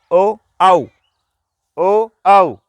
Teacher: कंठ का तो प्रयोग साथ में हो ही रहा है, परंतु साथ ही साथ ओष्ठ का भी प्रयोग हो रहा है, होठों का भी प्रयोग हो रहा है, इसलिए इसको नाम देंगे कंठोष्ठ्य।